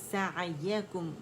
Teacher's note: کیف پہ رول ہوں گے، میم پہ ان رول ہو جائیں گے ہمارے لپس